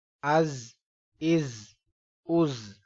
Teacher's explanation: اب یہ زا ہے، زا، اس کو ہارڈ کر کے پڑھیں گے، تھوڑا سخت کر کے سیٹی کی آواز سے۔